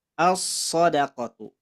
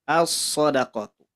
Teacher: Contoh yang kedua ada as-sodaqatu. As-sodaqatu diidghamkan, a-nya masuk ke huruf sod, lamnya diabaikan.